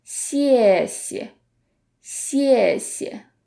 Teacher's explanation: In Chinese, when you have to repeat the same character twice, the second character often becomes the neutral tone, meaning that it's less stressed and it sounds much softer.